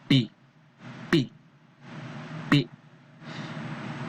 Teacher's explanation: then sound P is a voiceless bilabial top consonant.